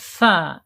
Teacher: Tsa ini ada di alisan ya. Jadi ujung lidah menyentuh ujung gigi seri tsa ya secara makhraj. Kemudian secara sifat ada di alhams ya yaitu mengalirnya nafas ketika diucapkan ketika tsa ini harakatnya sukun.